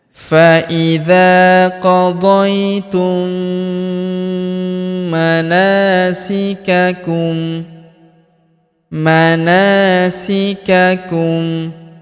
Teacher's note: Huruf na kita panjangkan dua harakat karena terdapat alif di depannya.